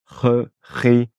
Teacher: comme si tu te raclais un petit peu la gorge. Ça va faire r. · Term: la J